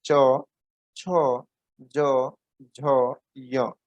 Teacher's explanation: च, छ, ज, झ, यह तालु से इसका उच्चारण किया जाता है, तो इसीलिए इसे तालु से कहते हैं, तालु से बोला जाने वाला वर्ण व्यंजन।